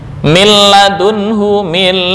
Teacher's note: disebut dengan idgham bighhairi ghunah atau idgham bila ghunah tanpa dengung